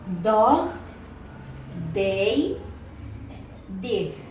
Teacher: According to voicing, D is voiced. Place of articulation is alveolar. Manner of articulation, D, is plosive.